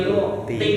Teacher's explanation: Yang membedakannya itu lidah bagian belakang dia naik jadinya tebal